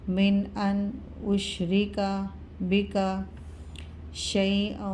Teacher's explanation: نون ساکن کے بعد حروف ہلکے میں سے حمزہ آ رہا ہے، غنہ نہیں ہوگا